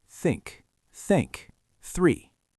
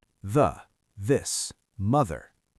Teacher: The voiceless one is just air. The voiced one is air plus a buzzing motor in your throat.